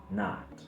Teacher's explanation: Este es el sonido más relajado del inglés. Bajamos la mandíbula con la punta de la lengua cerca de los dientes inferiores, pero el cuerpo de la lengua se encuentra en la parte trasera de la boca. Nota lo mucho que debo abrir la boca para hacer este sonido. · Nota lo mucho que debo abrir la boca para hacer este sonido. Entonces es una vocal relajada ya que no tensionamos nada, es trasera por la posición de la lengua y es abierta por lo mucho que debemos abrir la boca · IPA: /ɑː/